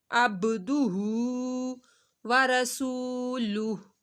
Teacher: ہو کو ایک الف کے برابر کھینچ کے پڑھا جائے گا